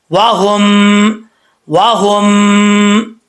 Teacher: अब यहाँ पर इदगाम मिसलाइन है, यहाँ पर मीम साकिन के बाद दूसरी मीम आ रही है। हा को हम दूसरी मीम से कनेक्ट करेंगे जिसके ऊपर शद है, जज़्म वाली मीम छोड़ देंगे